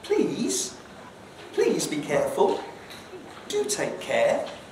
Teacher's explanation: with a full rise please can sound quite um pleading